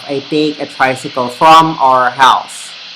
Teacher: in the taglish pronunciation we enunciate all of the words equally